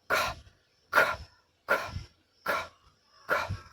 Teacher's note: अपने टंग के टॉप से नहीं, बैक पिछले भाग से हवा को रोकेंगे। Against the top of your mouth, और अपने माउथ के टॉप पार्ट को, ऊंचे वाले पार्ट को, ऑफ योर माउथ। · गले में कंपन नहीं होता है · अगर पीस ऑफ पेपर रखते हैं तो हवा झटके से जो है बाहर निकलेगी, और उसमें क्या होगा कि हवा में झटका लगेगा, हवा का झटका पेपर में लगेगा और पेपर आगे भाग जाएगा।